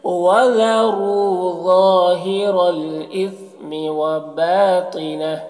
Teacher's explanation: وقف کی صورت میں یہ ہا کا جو الٹا پیش ہے سکون سے بدل جائے گا